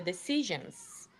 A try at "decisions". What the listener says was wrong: That S at the end is a Z, zebra sound. Decisions. Yeah, but don't push it out longer because then it sounds like S. Yeah, cut it because you're saying it sounds like an S.